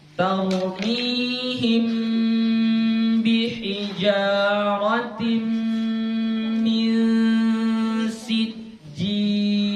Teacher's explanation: Mim jumpa dengan ba. Ini hukumnya ikhfa syafawi, ya, ikhfa syafawi. Bacanya dengung.